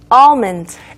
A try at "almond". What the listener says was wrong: L 발음이 있습니다. 네. 소리가 없는 것이 아닌데 아 뒤에 almond 특히 M으로 이어지기 때문에 거의 안 들리는 것처럼 될 뿐이지 있어요. 그래서 굳이 표기한다면 알몬드 정도가 되겠지만 그냥 아몬드죠 우리말로는. 그래서 아몬드인데 영어로는 아몬드 하시면 안 되고요. almond. 그래서 almond입니다.